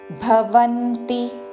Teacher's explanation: భవంతి మహాప్రాణాక్షము భ వా మీద ఆఘాత